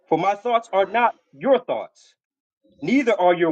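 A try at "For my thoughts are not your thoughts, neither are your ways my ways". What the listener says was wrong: Slow down, reader. You're reading too fast. Read that again.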